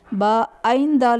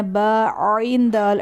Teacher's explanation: عین کی ادائیگی میں حمزہ کی آواز نہیں آنی چاہیے، با عین دال نہیں پڑھنا ہے، با عین دال، عین حلق کے درمیان والے حصے سے ادا ہوگا